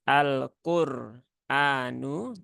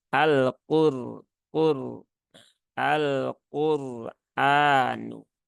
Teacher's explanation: takrif ya Ada lam takrif ee lam qamariah kemudian setelah itu qof bertemu dengan ro yang EE sukun sehingga rnya dia dibaca dengan tebal